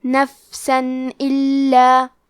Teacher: الف حروف الاظہار میں سے ہے، اظہار کا معنی ہے ظاہر کرنا، اور کیونکہ تنوین کی اصلیت نون ساکن ہے تو ہم یہاں تنوین ظاہر کریں گے اور اسے نون ساکن پڑھیں گے، اور بغیر غنہ سے یہ حکم کو ادا کریں گے